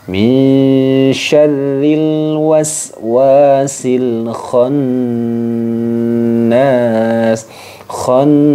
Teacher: jadi harus didengungkan kemudian di tahan dengungannya itu yang disebut dengan ghunah musyaddah